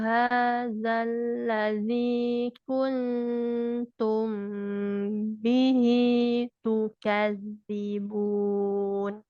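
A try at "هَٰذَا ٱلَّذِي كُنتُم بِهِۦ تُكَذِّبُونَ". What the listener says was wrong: nunnya jangan dijelaskan ya karena ini bukan izhar Tetapi dia adalah ikhfa ya samarkan nunnya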